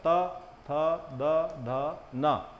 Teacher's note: दांत से स्पर्श करना होता है त जाक इनका उच्चारण होता है त थ द ध न · इसके बाद हो जाएगा ता वर्ग, इसमें जीभ को दांत से स्पर्श करना होता है